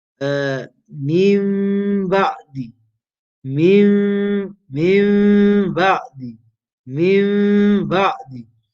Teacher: The Nun Sākina or Tanween is pronounced as a Mim, which is shown as, depicted as a small Mim above the Nun Sākina or the Tanween. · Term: Iqlab